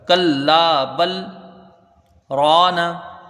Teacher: را میں ایک الف کی مقدار رہے گی، الف مدہ ہے. را کو اوپر پڑھیں گے، نون کے اوپر زبر ہے، اس کو جلدی پڑھا جائے گا.